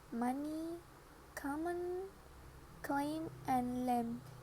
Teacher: The sound is always accompanied by the vibration of the vocal folds, making it voiced. The sound has no voiceless counterpart. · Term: bilabial nasals